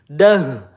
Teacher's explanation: kita baca dengan makhraj di pangkal tenggorokan. Dah, hati-hati ya, sering banget ya tertukar dengan huruf ha. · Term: ta marbutah